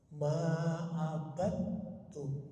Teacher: bacaan Ma abadum dalnya hilang ingat ya dalnya hilang Kenapa karena dia idgham masuk ke t